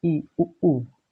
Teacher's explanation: समृद्ध स्वर जिसमें मुख नहीं खुलता, बहुत कम खुलता है। ई, इसमें देखो अंदर सकरा रहता है, बहुत कम खुलता है।